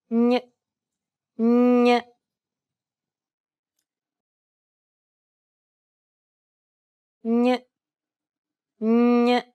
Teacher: instead of using the tip of your tongue as you would with a regular N, try to use the middle part of your tongue to contact the roof of your mouth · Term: Spanish N